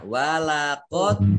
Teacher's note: Walaqad dal sukun itu termasuk huruf ya qalqalah. Qalqalah itu dibaca memantul ya.